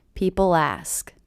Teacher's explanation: I do hear that L as really linking to the beginning vowel sound